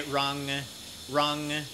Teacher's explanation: in regular speech then Thai people pronounce R and L identically